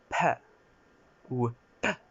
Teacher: je dirais plutôt que c'est un B aspiré